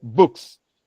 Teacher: in a word like books, you realize that the sound that comes before the plural morpheme is voiceless. As a result, it maintains its natural form.